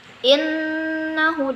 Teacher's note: di situ ada nun bertasydid. Nah, di situ disebut dengan gunnah. Jadi bacanya innahu, direndam dulu dua harakat